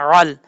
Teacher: عین کو اپنے مخرج سے ادا کرنا ہے، حمزہ کی آواز نہیں آنی چاہیے